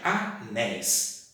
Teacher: Qual que é a sílaba mais forte? Néis. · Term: tonicidade